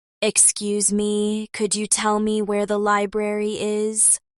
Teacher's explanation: could you becomes could ya and tell me links smoothly.